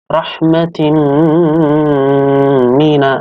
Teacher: Ada tanwin, kasrah tanwin bertemu dengan huruf mim. Dibacanya idgham bi gunnah. Artinya adalah masuk dengan dengung.